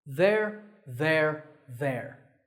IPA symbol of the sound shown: ðer